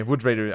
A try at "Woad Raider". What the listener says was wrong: Because you're saying Wood Raider, of course they're laughing. It's a Woad Raider. Like wood and then Woad.